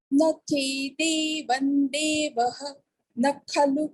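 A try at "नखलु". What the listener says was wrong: Yeah, so here one observation. While chanting kha, that is Mahaprana kha, it is heard as nakhalu. So extra k is heard. It's heard like a samyukta akshara. It is heard as nakhalu. It is not nakhalu.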